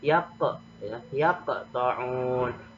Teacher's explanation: Maka cara membacanya agak ada pantulannya, seperti ada pantulan. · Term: qalqalah sugro